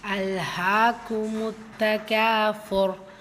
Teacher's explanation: ரா சுக்குூன் பெற்று வந்திருக்கு சோ அதுக்கு முந்தே உள்ள எழுத்தையும் நீங்க கவனிக்கணும் தும்மா பெற்றிருக்கிறதுனால வல்லினப்படுத்தி ஓதணும்